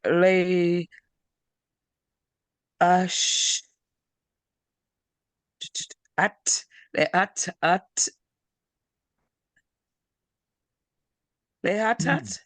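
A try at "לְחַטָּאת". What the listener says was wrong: There's a chet here. Are you pronouncing the chet? Lechatat.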